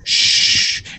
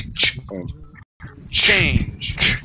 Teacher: Okay, so with the CH sound, when we pronounce the CH sound, it's a little bit different, okay, than the SH sound, okay? Here you're saying shh, and you're pushing the air over and it's flowing through. But when we pronounce that the CH, it's a punch of air